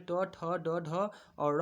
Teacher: मूर्धन्य, या अर्थात ये मूर्धा से बोले जाते हैं। इनका उच्चारण स्थान जो होता है मूर्धा से होता है। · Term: मूर्धन्य व्यंजन